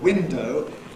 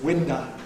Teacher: final unstressed O tends to be replaced by schwa, which doesn't happen in standard accents, so that for standard window, you get winda. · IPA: [ ˈwɪndə ]